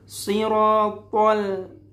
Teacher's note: Ataupun ketika di ayat ke-6 ada Ihdinas siratal, lamnya harus tipis.